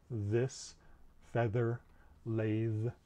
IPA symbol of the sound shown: ð